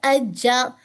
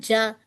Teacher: میری زبان کا مڈل حصہ اوپر کے ہارڈ پیلٹ سے لگ رہا ہے